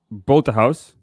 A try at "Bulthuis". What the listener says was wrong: No house. Bulthuis. But it's like Bulthuis, like this.